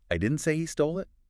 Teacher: stress on stole. So maybe he borrowed it or found it.